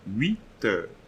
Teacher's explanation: you'll be having a liaison here between the T and the EU